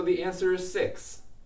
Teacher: if my intonation is falling at the end so the answer is 6 6 goes down I'm actually stating information